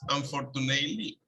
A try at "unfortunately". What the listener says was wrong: Ok, la TE no suena. De la A, aquí, A-ly. Unfortunately.